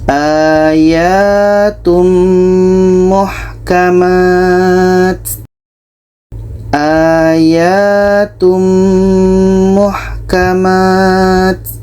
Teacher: Ada tanwin kita masukkan ke mim. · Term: idgham bi gunnah